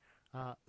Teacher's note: 혀가 치조에 닿으면서 부드럽게 그렇게 나는 소리라고 얘기할 수가 있겠습니다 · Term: 유음